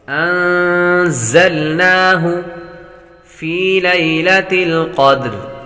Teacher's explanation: زا حروف صفیریہ میں سے بھی ہے تو سیٹی کی آواز بھی آئے گی۔ انزلناہ فی لیلۃ القدر، فی لیلۃ القدر، قدر قاف حروف مستعلیہ میں سے دال حروف قلقلہ ہے۔